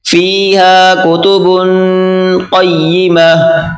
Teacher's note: قاف کو موٹا کریں، قاف اور یا آپس میں ملا کر پڑھیں گے